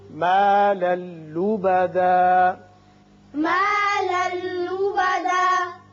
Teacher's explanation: لام پر دو زبر تنوین ہے، آگے لام ہے، یہاں ادغام بغیر غنہ ہوگا.